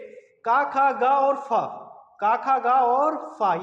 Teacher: क ख ग और फ क ख ग और फ ये जो चार हैं इनको ना जिह्वा के मूल से उच्चारण होता है। इनका जिहवा यानी जीभ के मूल से उच्चारण होता। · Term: जिहवा मूलय